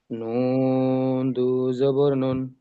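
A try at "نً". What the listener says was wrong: না, নান, নুন জবর না হয়।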